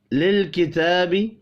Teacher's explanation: تا کے اوپر کھڑی زبر ہے، اس کو بھی 1 الف کے برابر کھینچ کر پڑھیں گے